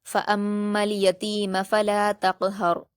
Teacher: میم پر تشدید ہے تو غنہ کے ساتھ پڑھیں گے